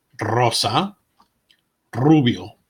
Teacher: single R sounds like a double are when a word starts with an R it is rolled exactly like the Double R